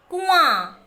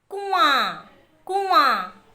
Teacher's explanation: इसका उच्चारण नाक से होता है, इसके लिए इन्हें अनुनासिक शब्द कहते हैं।